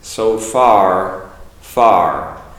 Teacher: be careful on the far because I'm making an R at the end